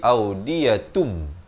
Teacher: hukum iqlab, ditukarkan daripada bunyi nun kepada bunyi mim. Audiyatun jadi audiyatum.